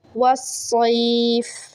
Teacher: صاد یا زبر سی یا لین ہے، صاد موٹا پڑھیں گے